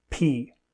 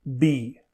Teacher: /p/ is voiceless and /b/ is voiced. To make both of these sounds, the upper and lower lips are pressed together, stopping air from coming out.